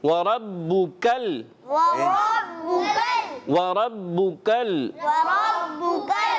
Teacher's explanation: را پیارے بچوں پر کر کے ادا کرنی ہے، موٹی ادا ہو، ٹھیک ہے، باریک نہ ہو